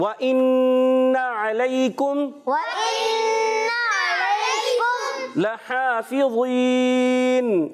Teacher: وَإِنَّ عَلَيْكُمْ لحافظین، ماشاءاللہ لام کو یہاں کھینچنا نہیں، جی یہ لام کو بغیر کھینچے ادا کریں گے، اور اس پر ہا کو 1 الف کھینچ کر ادا کریں گے، کیونکہ یہاں پر کھڑا زبر ہے